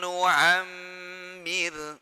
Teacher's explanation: Wa man nu'ammir, ra yang sukun jatuh setelah kasrah dibaca tipis, talqiq ya